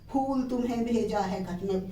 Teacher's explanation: बोलना है फ, ओष्ठ से उच्चारण करेंगे